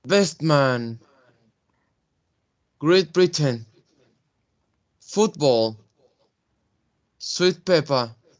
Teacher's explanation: the t it's more pronounced as a p